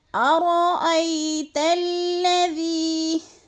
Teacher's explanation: تا کو جب لام مشدد کے ساتھ ملانا ہے ہم نے، تو اس کو ہم نے سختی کے ساتھ پڑھنا ہے، جمعوں کے ساتھ۔ · یا ساکن سے پہلے حمزہ کے اوپر زبر ہے تو یالین کو لمبا بھی نہیں کرنا اور جھٹکا بھی نہیں دینا۔ اکثر لوگ کیا مسٹیک کر جاتے ہیں، ارأی پڑھ جاتے ہیں یا ارأی لمبا کر جاتے ہیں، تو اس طرح دونوں مجہول ہیں، اس طرح نہیں پڑھنا۔